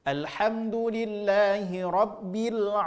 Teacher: Kesalahan kita biasanya penyebutan huruf a yaitu masuk ke hidung atau al-khayshum. Alhamdulillahi rabbil ke hidung, maka otomatis rusaklah makharijul huruf pada huruf ain.